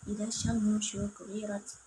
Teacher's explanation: Dan alif lam samsyah yaitu alif lam bertemu dengan shin dibaca secara melebur